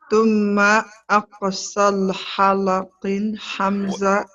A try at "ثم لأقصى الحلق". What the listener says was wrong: Okay, you said that part right, but you forgot the li part here. ثم لأقصل. لأقصل.